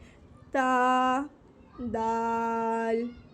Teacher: ज़बान की नोक जब सनाया उलिया की जड़ से लगेगी तो ता भी अदा हो रहा था और दाल भी अदा होगा